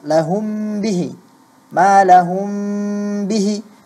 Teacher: itu ada ikhfa syafawi, mim sukun bertemu dengan ba, seharusnya dia di sana ada gunnah